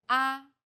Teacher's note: the first tone is with a high pitch